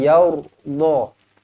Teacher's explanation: Ra dibaca tebal kerana sebelumnya berbaris atas